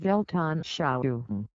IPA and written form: ˈvɛltʔanˌʃaʊ.ʊŋ (Weltanschauung)